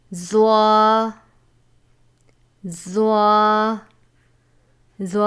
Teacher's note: زبان کا سرا اور اوپر کے دانتوں کے اندرونی کنارے سے ادا ہوتا ہے